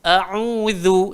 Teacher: hamzah keluar dekat bawah sekali, ain keluar dekat tengah